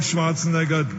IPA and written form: ˈʃvɑːrtsnɛɡər (Schwarzenegger)